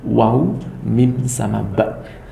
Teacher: Kedua bibir atas dan bawah bersama-sama, yaitu keluarnya huruf waw, mim dan ba.